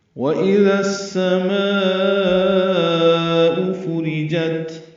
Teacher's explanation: واو ہونٹوں کی نہ تمام گلائی سے ادا کریں گے، حمزہ اقصی حلق سے بالجہر ادا ہوگا